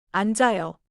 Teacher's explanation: 그래서 앉아요에서는 니은 소리가 앞에 남고, 지읒 소리가 다음 모음 아로 이어져요. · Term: 겹받침